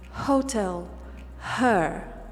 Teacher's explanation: It is the h that comes from here. It's not the h that comes from the back of the mouth, but rather from the throat. A very soft h. And that's why we don't say this h anywhere but at the beginning of the word.